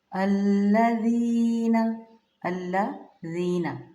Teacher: زینہ نہیں کرنا، نرم پڑھیں گے زال کو